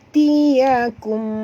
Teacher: mim mati bertemu dengan ba, ikhfa syafawi, dengung 2 harakat ya.